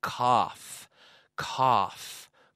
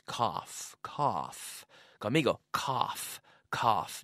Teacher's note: C-O-U-G-H. Pero se pronuncia cough. Cough. Como si fuera un F o dos Fs.